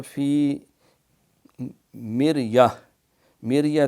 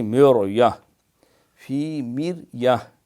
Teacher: یہ را جو ہے باریک ہے، اس سے پہلے ویسے زیر بھی ہے